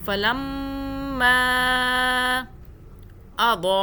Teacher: بڑی مدہ کی آپ پہچان کر لیں اور یہ چھوٹی مدہ بھی دیکھ لیں۔ چھوٹی مدہ 3 الف کے برابر کھینچا اور بڑی والی 6 الف کے برابر